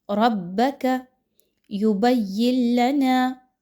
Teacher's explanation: کیونکہ نون ساکن کے بعد لام کا حرف آ رہا ہے اور لام کا حرف حروف یرملون میں سے ہے، لیکن ایسا ادغام یہاں پر کرنا ہے کہ جس میں غنہ شامل نہ ہو · را کے اوپر کوئی حرکت آ گئی تو اس وجہ سے اس را کو موٹا کر کے پڑھا جائے گا، با کے ساتھ مضبوطی کے ساتھ ملائیں گے، با مشدد ہونے کی وجہ سے۔